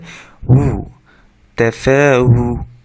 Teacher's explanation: ঠোঁট থেকে উচ্চারণ হবে বাতাস সহকারে